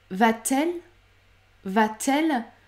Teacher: oui on préfère ajouter une consonne devant la voyelle et donc ce T qui n'existe pas normalement est ajouté lorsqu'on va poser une question